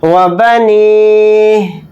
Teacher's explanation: حالت وقف میں ہا کو ساکن بنا کر پڑھیں گے.